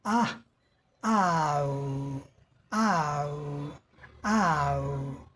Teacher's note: आ is a long sound look at the diagram listen and then inside the sound it move from आ to उ यह आ से उ की तरफ हमारी आवाज मूव करती है।